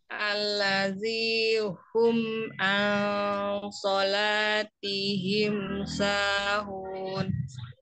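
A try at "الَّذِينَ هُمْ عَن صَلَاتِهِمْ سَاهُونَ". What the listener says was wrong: Allazina, bukan alladhi, allazinahum.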